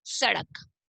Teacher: स का उच्चारण दांतों से टच करते हुए बोलेंगे।